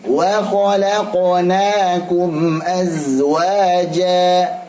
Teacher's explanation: Alhamdulillah qafnya sudah tebal, bagus. Tapi antum latih supaya jangan monyong ya. Kho sama la, kokonya ini kho dan ko jangan monyong.